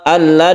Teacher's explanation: membacanya nunnya itu dilebur menjadi lam artinya suara Nun itu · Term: Idgham bila gunah